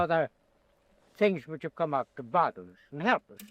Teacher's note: He does not pronounce his R's when they are at the end of a word. So they're like turned into a schwa, or when they are preceding a consonant. But he does pronounce them when they're followed by a vowel. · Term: non-rhotic